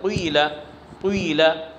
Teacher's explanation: قیلہ میں جو کسرہ ہے اس کے اندر ضمہ کی آمیزش پیدا کی جاتی ہے، یعنی کیا کہ پڑھیں گے ضمہ لیکن ہونٹوں سے پڑھیں گے کسرہ لیکن ہونٹوں سے ضمہ کی طرف اشارہ کیا جائے گا، قیلہ قیلہ، اور غیضہ میں غیضہ غیضہ وغیرہ، تو یہ حرکات فرعیہ میں سے ہے۔ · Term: کسرہ مشممہ